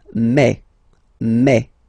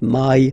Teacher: French remember when you combine this a and then e vowels you get the sound e e so really open E